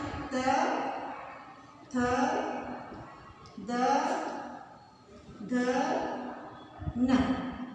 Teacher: त वर्ग का उच्चारण स्थान है त, थ, द, ध, न। और इनका उच्चारण स्थान है दंत, दंत यानी दांतों के द्वारा उच्चारित करने वाले